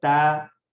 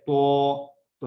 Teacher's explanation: ایک ہے تا جب میرا منہ چوڑائی کی طرف سیدھا ہے تا، ایک ہے تو میں جب منہ گول کرتا ہوں خود وہ تا جو ہے تو بن جاتا ہے.